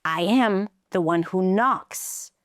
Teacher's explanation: he raises his pitch and drops it